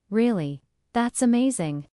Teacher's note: Surprise gives rising pitch at the end.